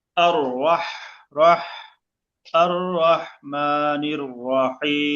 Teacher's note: দিয়ে পড়তে হবে কি দিয়ে পড়বেন >> জবর জবর দিয়ে >> জবর দিয়ে র টা মোটা হবে হা গলা মাঝে যাবে শেষে তিন আলিফ